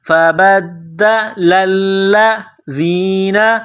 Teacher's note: لام کو لام کے ساتھ ملائیں گے، لام میں سختی کرنی ہے